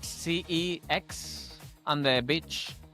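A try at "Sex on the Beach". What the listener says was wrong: F. S. EX. SEX. Not CEX. SEX. SEX. You're saying CEX.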